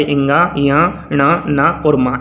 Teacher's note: इन्हीं वर्ण को अनुनासिक वर्ण भी कहते हैं, क्योंकि ये नाक द्वारा बोले जाते हैं